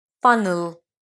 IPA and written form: ˈfʌn(ə)l (funnel)